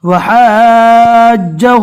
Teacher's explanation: ہاں کو جیم سے ملانا ہے اس لیے کہ جیم کے اوپر تشدید ہے